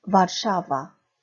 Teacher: 뒤에서 두 번째 와르샤와, 샤의 강세가 있죠